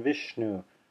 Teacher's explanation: this is the retroflex sha sibilant which is the teeth not fully closed together as in vishnu